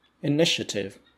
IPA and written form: ɪˈnɪʃətɪv (initiative)